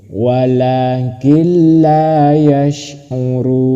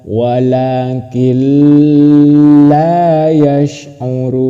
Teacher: Ketika membaca nun, nun mati mau masuk ke lam itu tidak usah berdengung. Tidak usah berdengung langsung. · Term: idgam bila ghunah